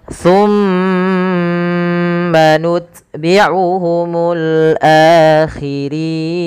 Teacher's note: a-nya bertemu dengan alif yang dimana dia dipanjangkan 2 harokat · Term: mad badal